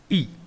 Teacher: E is a centralized front unrounded vowel just above the half close position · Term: short vowel E